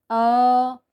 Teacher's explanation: अगर हम अ बोलते हैं तो वो हमारा सीधा जो वॉइस बॉक्स है वहां से निकल कर आता है। राइट? तो अ जो है वो डायरेक्ट कंठ से आता है।